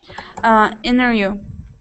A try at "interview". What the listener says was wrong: No, that's not, because you said inner you instead of interview.